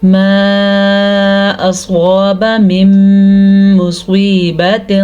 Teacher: ماں کے اوپر جو مد آپ کو نظر آ رہی ہے یہ 3 الف کے برابر ہے